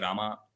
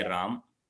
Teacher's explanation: in North India people just swallow the ending akara they just say Ram right so that is why this akara